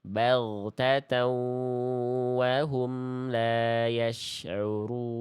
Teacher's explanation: An-nya lebur ke huruf wau. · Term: idgham bigunah